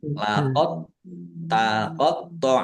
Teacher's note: Laqot taqot thnya baca dobel dibaca dobel ditekan dan ditahan biar tampak dobelnya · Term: idgham mutaqorribain